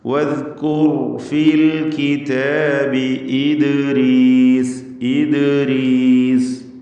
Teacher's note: ദാലിൻ്റെ സുക്കൂൻ ഖൽഖല സുഗ്റ നൽകി ശബ്ദം ചലിപ്പിക്കണം.